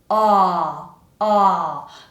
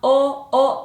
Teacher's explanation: My tongue is down and back and low. So when I pull my tongue like that, it kind of pulls the jaw along with it. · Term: ah vowel sound